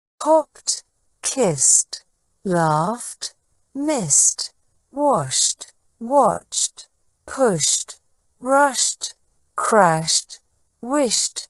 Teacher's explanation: the past tense ending e d is pronounced with a t sound instead of a D sound this happens when the verb ends in an unvoiced sound such